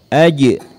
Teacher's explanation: Ya, kemudian saat disukun huruf jim ini mempunyai sifat pantul atau qalqalah.